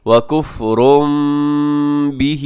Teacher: ہے، سبیل اللہ۔ آگے وکفر بہ، وکفر پہ تنوین ہے اور تنوین کے بعد با ہے، تو یہاں پر ایسا ہو رہا ہو جہاں پر بھی، تو وہاں پر آپ تنوین کو میم کے ساتھ بدل دیتے ہیں، جس کو اقلاب کہا جاتا ہے